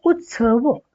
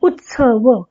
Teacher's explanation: जोडाक्षर सुद्धा ऱ्हस्व स्वराने युक्त असेल तर ते लघुच अक्षर असतं, पण जोडाक्षरा मागील ऱ्हस्व अक्षर असलं तरी सुद्धा ते जोडाक्षर उच्चारण्यास मागील अक्षरावर जोर द्यावा लागतो, त्यामुळं मागील अक्षर ऱ्हस्व असलं तरी गुरु मानलं जातं